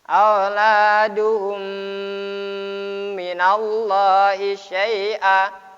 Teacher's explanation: Mem mati berjumpa dengan mem dibaca idgham mislan. Idgham mislan ma'akabir.